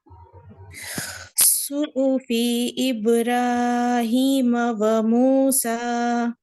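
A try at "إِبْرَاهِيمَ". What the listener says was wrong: دیکھیں ابراہیم تھوڑا زیادہ کھینچا ہے آپ نے. ابراہیم را ہیوی را. اب تھوڑا پریکٹس کریے را کی. اور را کی تھوڑی پریکٹس. تھوڑا انگلش والا آر ہم نہیں نکالیں گے.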